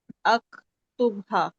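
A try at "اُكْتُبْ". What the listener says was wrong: अकतुब नहीं होता, उकतुब होता है। पेश है, उकतुब है ना। उकतुब होता है, अकतुब तो देखें बुरा ही लग रहा है, पढ़ते हुए बुरा लग रहा है।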